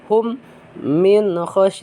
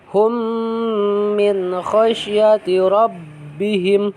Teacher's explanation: Karena mim mati bertemu dengan huruf mim lagi gitu ya. Jadi si mim yang mati itu dimasukkan kepada mim yang hidup yang kedepannya. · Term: idgham mislen sogir